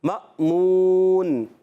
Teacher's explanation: मामून में मीम को अलिफ से नहीं बल्कि हमज़ा से मिलाएंगे। ये अलिफ नहीं है, हमज़ा।